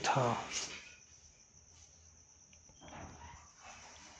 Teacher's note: हिंदी की स्पर्श अघोष महाप्राण दंत व्यंजन ध्वनि है